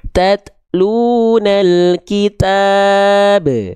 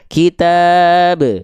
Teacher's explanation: Betul dia jadi sukun, tapi kalau ba sukun ada kolkolahnya.